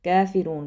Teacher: अब ये वाला जो कैफ है ये बारीक पढ़ा जाएगा